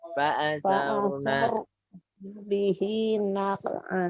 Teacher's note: Sar tidak sekedar sar, tapi saruna. Saruna roknya tebal.